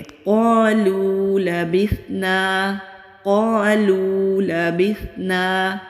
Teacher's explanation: نون کے اوپر زبر ہے، آگے خالی الف ہے، الف مدہ ہے، ایک الف کے برابر کھینچ کر پڑھیں گے